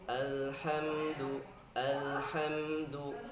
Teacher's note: Ada yang baca contoh misal alhamdu, alam terlalu bergeser, atau kita baca alhamdu terlalu tertekan. Ya, lam ini adalah memiliki sifat tawasud, jadi pertengahan.